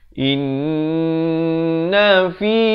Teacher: dengung di sini dua harakat wajib al-gunnah.